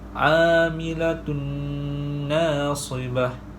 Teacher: Tanwin bertemu dengan huruf nun dan cara bacaannya ialah memasukkan tanwin ke dalam huruf nun beserta dengung 2 harakat.